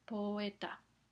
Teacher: Ahora sabemos que poeta, la o y la e se pronuncian con la misma duración. · La O y la E forman una secuencia de dos vocales, pero están en sílabas diferentes y esto afecta la pronunciación. Entonces, oímos una duración normal tanto con la O como con la E. Ninguna tiene una duración más corta. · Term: hiato